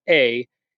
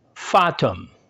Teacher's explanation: In English, it has the sound A, as in our word fate, whereas in Latin, the long A sound is pronounced ah